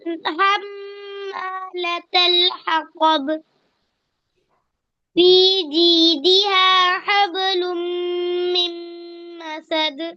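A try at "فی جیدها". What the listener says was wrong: فی میں فا کو صاف ظاہر کرنا ہے. فی دیکھیے ادھر فی جیدہا حبل من مسد.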